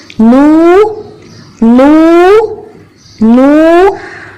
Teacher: نون کے ساتھ جو واو ہے اس کی آواز نکالنے کے لیے ہونٹوں کو ہم پورا گول کر لیں گے